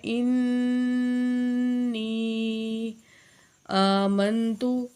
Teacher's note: انی، نون کے اوپر شد ہے اور یہاں پہ جو ہے شد کو سختی سے پڑھنا ہے غنہ کر کے، اور یا جو ہے ساکن ہے، اس سے پہلے یا زیر ہے تو حروف مدہ میں سے ہے، اور یا بڑی مد ہے یہاں پہ یا کے اوپر، تو اس کو بھی ہم 4 سیکنڈ کھینچ کے پڑھیں گے